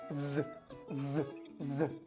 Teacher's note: la S y la X se van a transformar en una Z, es decir, en el sonido Z